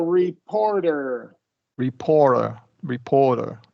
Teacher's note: the second syllable gets the stress